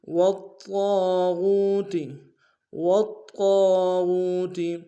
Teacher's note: والطاغ میں طا کے اوپر تشدید زور دیں گے ، واو کو طا کے سامنے لائیں گے، طا کے سالف